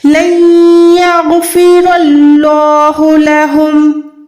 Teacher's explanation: غین کو موٹا رکھیں، غین حروف مستعلیہ یعنی موٹے حروف میں سے ہے۔ رو بھی موٹی ہے، اللہ کا نام بھی موٹا ہے۔ اللہ نہیں پڑھ سکتے، اللہ کا نام باریک نہیں رکھ سکتے کیونکہ اللہ کے نام سے پہلے زبر ہے، اللہ کے نام کو ہم نے موٹا ادا کرنا ہے۔